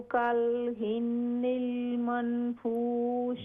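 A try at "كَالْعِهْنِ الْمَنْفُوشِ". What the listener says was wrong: कल इहनिल, आइन हाजिर, कल इहनिल। कल इहनिल मनफूश।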